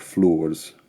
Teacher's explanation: flowers was pronounced with one syllable something like floors